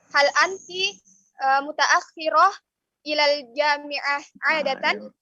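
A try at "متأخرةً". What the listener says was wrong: Hal anti mutaakhiratan. Kasih jelas biar jangan dikasih sukun dulu karena kita mau jelas kita di belakangnya. Hal anti mutaakhiratan.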